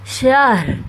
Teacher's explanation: لیلۃ القدر خیر، یہاں پہ ادغام کا گنہ ہوگا، من الف شہر، ہلکی سی را کی آواز آئے گی اور شین کو ہا کے ساتھ